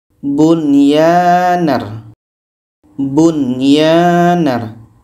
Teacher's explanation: Jadi nun ini dibaca jelas, ia pun dibaca jelas. Dan tidak ada dengung. · Nun jelas, ya jelas, dan tidak ada dengung. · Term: izhar wajib